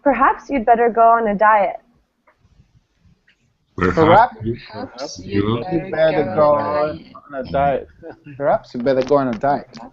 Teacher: essentially it starts higher and and goes lower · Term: falling intonation